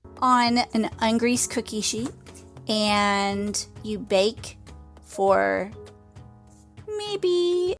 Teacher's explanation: Une voix qui reste au même niveau après on et for.